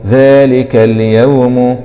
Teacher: همزة وصل وسط الكلام لا تنطق ويبدأ بها بالفتح